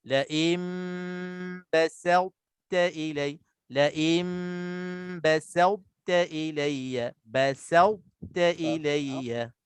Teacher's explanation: Sin jaga jangan jadi so, to kita muncung jangan ada qalqalah, dan ta itu jangan jadi to.